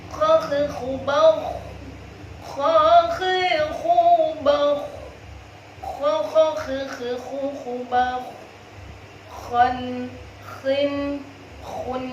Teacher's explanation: Ya, dari tenggorokan atas. Dia juga punya sifat isti'la, juga punya sifat rikhwah, mengalir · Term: huruf kha